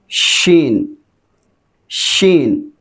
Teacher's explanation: शीन, शीन को जिस वक़्त अदा करते हैं तो आवाज़ पूरे मुंह में फैल जाती है। ये तफशी की सिफत है इसमें, इसके अंदर आवाज़ का फैलना ज़रूरी होता है।